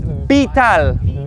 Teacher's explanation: the letter V is always going to be a b